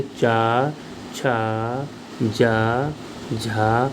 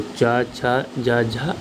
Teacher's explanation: इन वर्णों का जो उच्चारण स्थान होता है वो हमारा तालु होता है